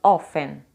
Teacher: Não existe a pronúncia do T. É como se ele desaparecesse.